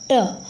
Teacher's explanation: जब हम ट का उच्चारण करने चलेंगे तो आपकी जीभ जो है वो तालु से सट जाती है, और यदि वो वहीं सटी रहेगी तो मुख की हवा जो है वो मुख के अंदर ही रह जाएगी और वो बाहर नहीं निकलेगी। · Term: मूर्धन्य